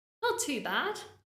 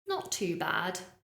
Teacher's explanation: now notice my intonation there if I said not too bad my intonation is rising I've got a smile on my face · I'm using falling intonation, and the person I'm speaking to would be able to tell, okay, she's okay, but she's not really good. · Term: intonation's rising